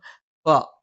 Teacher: രണ്ട് ചുണ്ടിൽ നിന്നാണ് മേലെ ചുണ്ട് അല്പം പുറത്തേക്കും താഴെ ചുണ്ട് അല്പം ഉള്ളിലേക്കും കയറിനിൽക്കും